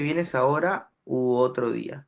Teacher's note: Esa O, que es una vocal media, posterior se transforma en una vocal alta o en una vocal posterior alta